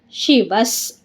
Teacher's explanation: ವ ಮುಂದೆ ವಿಸರ್ಗ ಇದೆ ವಿಸರ್ಗದ ಮುಂದೆ ನಮಗೆ ಸ ಇದೆ ಅದಕ್ಕೆಲ್ಲ ಅರ್ಧ ಸ ಆಗುತ್ತೆ